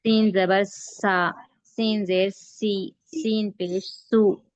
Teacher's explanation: باریک پڑھیں گے اور اس میں سیٹی کی آواز آنا